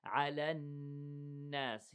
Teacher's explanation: Here we have 2 seconds. حرف غنة مشدد.